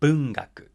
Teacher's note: these words descend rather than ascend in pitch after the first syllable, and thereby fall into the initial high pitch accent category